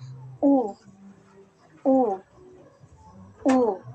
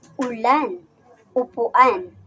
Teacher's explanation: ang posisyon ng ating dila ay nasa mataas at ang bahagi naman ng ating dila ay nasa likod. Kaya ito ay binibigas na u u.